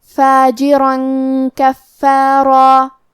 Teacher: را پہ تنوین زبر ہے پھر حرف الکاف ہے، یہاں حکم ہے اخفاء تو ہم یہ حکم کو غنہ کے ساتھ ادا کریں گے